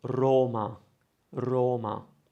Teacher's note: for Rome, we say Roma. I'm using the closed O.